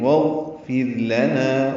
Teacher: واو کو غین سے ملا دیں گے، غین ساکن پہ اظہار ہوگا، غین پہ قلقلہ نہ ہوا، وہ یعنی واغفر لنا، را باریک ہے اور نا الف مدہ ہے.